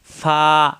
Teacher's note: উপরের দুই দাঁতের আগা নিচের ঠোঁটের পেটের সঙ্গে লাগাইয়া ফা